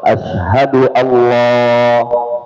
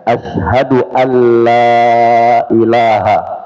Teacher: menebalkan huruf lam pada kalimat alla sehingga kedengaran seperti menyebut Allah